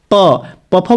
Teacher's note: सब में दोनों ओठ स्पर्श करेंगे, इसलिए प वर्ग ओष्ठ।